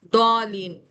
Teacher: جیسے سورہ فاتح میں سب سے آخر والا لفظ دیکھیں، ضالین، اب یہاں پہ الف مدہ ہے، الف مدہ کے بعد کیا آ رہا ہے، لام پر تشدید آ رہی ہے، تو حروف مدہ کے بعد جب تشدید آتی ہے تو ہم اس ورڈ کو جو ہے 7 فنگر کھینچتے ہیں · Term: مد لازم